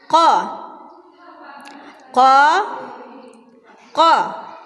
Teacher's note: Cara menyebut huruf ko adalah dengan mempertemukan pangkal lidah dengan langit-langit bagian atas. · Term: huruf qa